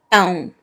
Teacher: you didn't say pão with nasal sound. Probably you said pau.